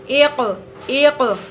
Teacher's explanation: قاف میں قلقلہ ہوگا یعنی آواز پلٹ کر واپس آئے گی